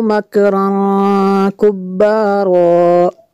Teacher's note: تنوین کے بعد کاف ہے، حروف اخفا میں سے یہاں پہ اخفا ہوگا، اس لیے یہاں پہ غنہ کریں گے